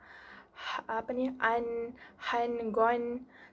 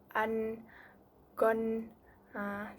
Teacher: Cara bacaannya kita akan menzahirkan nun mati dan tanwin dengan lembut tanpa dengung. Tanpa dengung ni tanpa yang gitu, tiada bunyi begitu.